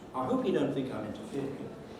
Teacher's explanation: a fall rise on the third syllable of interfering. Realize it's fall on the nucleus itself, a rise on the tail syllable, and the mark in front of hope tells us it's a falling head.